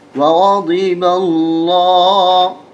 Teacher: یہاں پر لفظ اللہ موٹا کر کے پڑھا جائے گا اس لیے کہ اس سے پہلے زبر ہے. زبر اور پیش ہونے کی صورت میں موٹا کر کے پڑھا جاتا ہے لفظ اللہ.